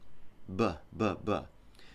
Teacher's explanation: Same exact movement, same exact tools as the P sound, but this time we're going to use the voice. You activate the voice just before you open your lips, B, B, B, like that.